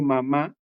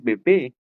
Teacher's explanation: si pronuncia, por ejemplo, mamá, también se da cuenta que cierra la boca, igual como dice bebé, siempre cierra la boca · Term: bilabiales